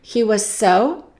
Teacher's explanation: We have 2 S's. We only pronounce them as one.